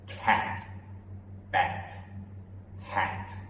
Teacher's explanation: with the short a a in like in the word cat it's a wide open Sound almost like ah but a little sharper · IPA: /æ/